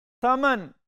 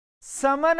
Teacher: ثمن کا معنی ہوتا ہے قیمت، کسی چیز کا عوض بننا، اور اگر اس ثا کی جگہ سین پڑھ دیا، چونکہ ثا کو نرمی سے ہم پڑھتے ہیں اور سین میں سیٹی کی آواز آتی ہے